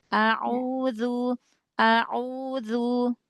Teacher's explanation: huruf ainnya dilembutkan lagi. Huruf ain punya bainiyah ya. Jadi lembut ya.